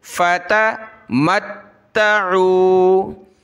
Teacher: ता को सख्त करेंगे तशदीद की वजह से, मत्त आइन वाव पेश ऊ, फ़तमत्तऊ फ़सौफ़ तअलमून, फ़सौफ़ तअलमून।